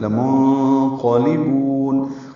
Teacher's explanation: لمنقلبون، یہ لام کو لمبا نہیں کرنا، لا منقلبون نہیں پڑھ دینا، لام جلدی سے پڑھیں گے۔ نون ساکن کے بعد قاف آنے کی وجہ سے نون کی آواز چھپائیں گے، اخفا ہو گئی۔ · با کو لمبا کریں گے، وقفاً مد عارض للسکون ہے۔ لمنقلبون، آخر میں نون کی آواز پہ اظہار ہوگا، یعنی قلقلہ نہیں ہو، نون کی آواز ہلے نہیں۔